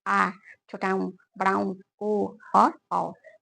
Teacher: जीभ के जो पिछला हिस्सा है उसके सहायता से यहां पर उसका उच्चारण किया जाता है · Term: पश्च स्वर